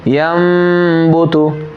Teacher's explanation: जब आप नून साकिन को मीम से बदल कर पढ़ेंगे तो नून साकिन की जगह पे क्या पढ़ रहे हैं आप? मीम। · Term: इक़लाब